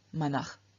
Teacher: In nominative, vocative, accusative, we have no ending added, and through external sandhi, the S at the end of manas changes into visarga, and so we get the form manach.